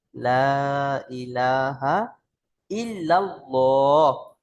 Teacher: কারণ আল্লাহ শব্দের লামের আগে জাবার এসেছে, তাই আল্লাহ শব্দের লামকে ল পড়তে হবে, অর্থাৎ পুর করে পড়তে হবে।